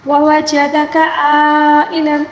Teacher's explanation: عَائِلًا، اب آئین کو درمیانی حلق سے ادا کریں گے اور مد متصل کی ادائیگی بھی 5 الف کے برابر ہوگی